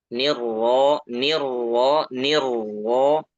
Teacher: rnya dibaca tebal tapi harus kita perhatikan di sini takrirnya ya getaran pada rnya itu jangan lebih dari sekali